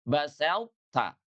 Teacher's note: huruf to itu sifat isti'lanya dan juga sifat itbaqnya itu tidak lebur kepada huruf ta, ya. Walaupun dia masuk dalam kategori idgham, tapi idghamnya itu sebagian.